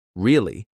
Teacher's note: if they say it with a falling tone really they're confirming something or expressing certainty